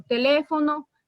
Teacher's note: sílaba tónica es decir la que se pronuncia con más énfasis en la antepenúltima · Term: palabras esdrújulas